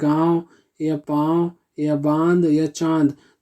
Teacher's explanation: इसके उच्चारण में हवा मुंह और नाक दोनों से निकलती है